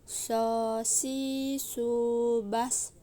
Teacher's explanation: Tempat keluarnya sama seperti melafalkan huruf sin. Yang membedakan adalah suaranya menebal saat melafalkan huruf sod.